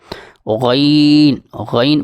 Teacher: غین حلق کے اوپر والے حصے سے ادا ہوتا ہے اور یہ موٹا پڑا جاتا ہے